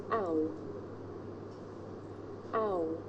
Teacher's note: The shape the mouth makes changes from the beginning of the sound to the end. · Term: diphthong